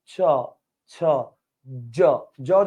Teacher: উপরে বাতাসটা তালুতে ব্লক করে রাখে। ব্লক করে তারপর ধুম করে বেরে যায়।